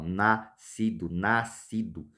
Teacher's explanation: o som do S aqui ele é engolido pelo C